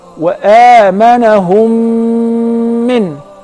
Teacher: if the first mim is non-vowel or sakinah followed by a voweled mim, so I will merge the first in the letter and I will pronounce them as one